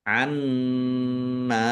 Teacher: nun tasdid dibaca ghunah atau mendengung. Ditahan biar tampak mendengung. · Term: gunnah